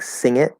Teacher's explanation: when the NG, or this nasal sound, connects, if it connects to another word, like sing it, notice, I'm not really saying g. I'm not saying sing it.